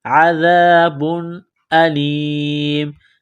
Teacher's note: ذال کو پڑھتے وقت زبان تھوڑی سی باہر نکالیں گے · تنوین کے بعد حمزہ ہے، حروف حلقی ہے تو تنوین پر غنہ نہیں کریں گے۔